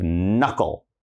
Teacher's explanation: it starts with K, but we can't say the K